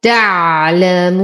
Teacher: لدينا واو ساكنة ما قبلها مضموم وبعدها حرف ساكن سكون عارض، فإذا تولد لدي مد عارض للسكون يمد بمقدار 2 4 6 حركات